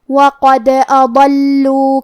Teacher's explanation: ضاد حروف التفخیم میں سے ہے تو ہم یہ حرف کو بھاری آواز میں اور منہ پھلا کے پڑھیں گے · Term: حرف الضاد